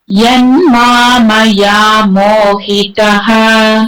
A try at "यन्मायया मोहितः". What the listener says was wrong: यन्मायया मोहितः மாமயா கிடையாது, மாமயா கிடையாது, மாயயா மாயயா. மாயயா மாயா அந்த மாயை. यन्मायया मोहितः வரக்கூடாது, மாக்கு அப்புறம் ம வரக்கூடாது, மாக்கு அப்புறம் ய தான்.